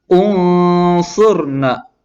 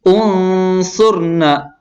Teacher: Jadi lidah kita pertama, misalnya contoh yang pertama membunyikan nun ya. Didengungkan ya. Tetapi separuh makhrajnya di nun dan separuh lagi ke so ya. Jadinya jadi langsung berpindah, makanya itu dinamakan samar-samar. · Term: Ikhfa